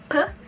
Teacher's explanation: P is a voice bilabial plosive, wherein the oral passage is blocked by closing the lips, P, and release it in a burst while the vocal cord is vibrating.